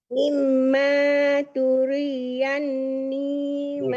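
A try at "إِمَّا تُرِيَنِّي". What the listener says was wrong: Turiyan bukan turian tapi turiyan.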